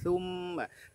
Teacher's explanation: Thumma huruf sa ya, ujung lidah kita keluar dari batas gigi ya. Thumma, mimnya huruf tipis.